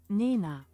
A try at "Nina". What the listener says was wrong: Well, it's actually a little bit longer of an I.